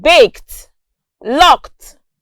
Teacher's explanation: And notice that in these words, the ED is represented with the consonant sound T.